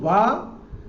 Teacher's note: वा का उच्चारण स्थान दांत और ओठ है ऊपर का